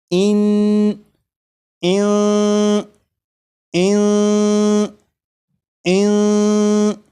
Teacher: जब आप ज़बान तालू से नहीं लगने देंगे तो फिर यहाँ पर इख्फा हो जाएगा। इख्फा मतलब نون ساکن کی جو آواز ہوگی وہ ناک میں چھپ جائے گی، اس طرح کی اس میں غنہ بھی ہوگا۔ جیسے پہلے میں اسے پڑھوں گا اس طرح کہ زبان تالو سے لگے گی، اور اس کے بعد پھر 3 مرتبہ اس طرح پڑھوں گا کہ زبان تالو سے نہیں لگی ہوگی، جیسے ان ان ان ان۔